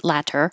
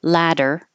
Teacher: it's much more common for American English speakers to change that t to a d ladder and then it will sound exactly the same as ladder